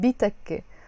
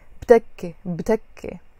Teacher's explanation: Here I said bitakke, but when I'm reading fast, I can say btakke